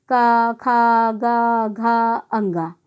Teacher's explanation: जैसे क वर्ण, क वर्ण को जब हम उच्चारण करते तो आवाज़ कहाँ से निकलती, गले से, कंठ यानी गले से।